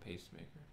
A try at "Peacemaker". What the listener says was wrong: Not pacemaker, not the thing that keeps your heart going if it slows down.